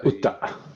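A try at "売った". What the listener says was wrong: Utta. Good. Yes, exactly.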